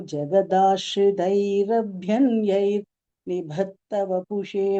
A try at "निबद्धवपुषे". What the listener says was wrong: நிபத்த வந்துருது த வருதுனால நிபத்த சொன்னீங்கன்னா இன்னும் பெட்டரா இருக்கும். நிபத்த இல்லையா, அது நீங்க அந்த இடத்துல எல்லாம் மூச்சு எல்லாத்தையும் சேர்த்து சொல்ல அந்த சமயத்துல நிபத்தன்னு வந்துருது. அது மட்டும் கொஞ்சம் பார்த்து.